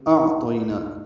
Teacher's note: نام مد منفصل ہے، الف مدہ کے بعد حمزہ دوسرے کلمے میں آ رہا ہے، تو ان یہ 4 حرکات لمبا کریں گے۔ اعطینا، حمزہ کو عین سے ملانا ہے، حمزہ اقصی حلق سے، عین وسط حلق سے ادا ہوگا